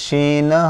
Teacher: এই অক্ষরটা উচ্চারণ হবে শিন জিহ্বার মাঝখান তার বরাবর উপরে তালুর সাথে লাগিয়ে উচ্চারণ করতে হয়